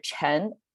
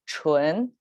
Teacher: chen versus chun, the tone is kept, preserved. Only the vowel got switched out. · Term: vowel switch